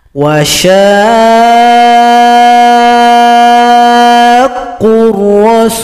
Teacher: panjangkan shin 6 ketukan, baru tasydid pada huruf qaf. Wa syaqqur rasul, dipanjangkan dulu baru ditasydidkan. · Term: mad lazim mutsaqqal kalimi